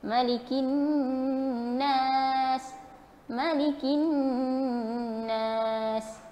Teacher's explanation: Nun yang bersabdu, kita dengungkan dia, wajib gunnah pada dia 2 harakat.